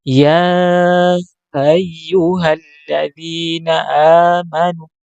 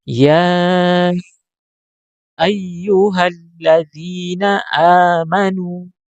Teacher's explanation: Ah, ini terlalu dibuka pita suara sehingga seakan-akan bukan bunyi hamzah tapi bunyi ha. seharusnya menutup penuh ya pita suara sehingga menghasilkan huruf hamzah berbunyi a